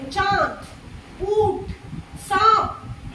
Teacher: नाक से वायु निकलती है वो अनुनासिक होता है। अनुनासिक होता है छोटी अंग और आपका चंद्र बिंदु, जैसे चांद, ऊंट, सांप, इस तरीके से।